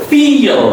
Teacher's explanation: Very soft, slight sound of a yeah sound coming in the middle.